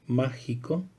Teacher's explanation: proparoxítona, en donde el acento recae en la anterior a la penúltima sílaba